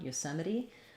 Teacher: meri we have a schwa here or an e sound here the t is going to be flapped and then our last e is actually going to say the